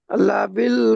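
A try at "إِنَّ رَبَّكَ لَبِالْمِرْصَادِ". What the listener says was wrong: লিবিল নয়, লাম জাবার লা হয়।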